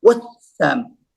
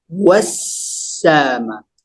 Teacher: Huruf sin bertanda sabdu, pastikan kita kena raihkan sifatnya iaitu mengalir dan terlepas angin. Wassama. Elakkan daripada kita menyekat angin tu.